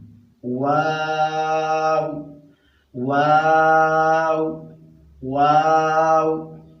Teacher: تاسو په دې باندې په خپله هم پریکټس وکړئ چې کله د دې سره ته همزه ولګي او دا ټکي په خپله ساکن کې او د اواز په کوم ځای باندې ودرېږي ان ان ان، نو دقه لفظ د دغې ځای نه ادا کېږي. واو ادا کېږي د دوه شونډو د ګول کېدو نه. واو واو واو.